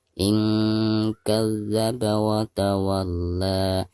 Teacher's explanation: Ketika diwakofkan, bacaan la-nya dihukumi mad tabi'i dan dibacanya 2 harokat. · Ara'aita in nun sukun berhadapan dengan huruf ikhfa yaitu kaf di sini ya, maka nun sukunnya harus disamarkan.